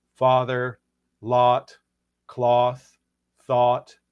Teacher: rockies most folks in the rockies that i was recording are doing all of them as the same sound a slightly rounded sound so father lot cloth thought they're all the same vowel most